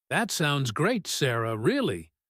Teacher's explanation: The pause after really is very important. It signals a contrast. The word but is coming. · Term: contrastive rhythm